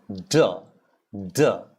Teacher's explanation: you can hear a sizzling sound because the tongue is next to the top of the tooth